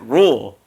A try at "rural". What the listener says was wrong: No. You're saying breaking rules. That's what you're saying. Rural. It's a two thing. It's a two thing. Rural. Rural. Roll that tongue. Rural.